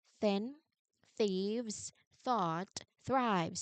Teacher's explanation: Th sound is voiceless, unvoiced, thin, thieves, thought, thrives. So meaning the sound of an unvoiced th is no vibrations at all